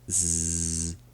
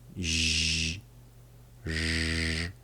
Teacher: The normal Z sound is made when your tongue is just behind the teeth, but the zh and zh sounds are made by having your tongue below or above your teeth.